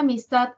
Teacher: Tat es la sílaba tónica, tiene mayor intensidad que a y mis. Por lo tanto, a y mis son átonas.